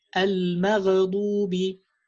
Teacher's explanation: when the ghain in the state of the sukoon, you might have a qalqala with it